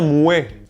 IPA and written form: mwe (mue-)